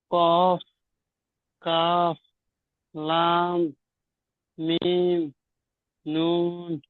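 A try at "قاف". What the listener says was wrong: জি ঠিক আছে, তো টানটা আরেকটু বেশি দেবেন, কফ, কাফ, লাম, মিম, নুন, জি ঠিক আছে,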